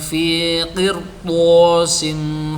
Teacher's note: Ra sukun setelah kasrah bertemu to, shad dan qaf berharokat fathah, maka dibaca tebal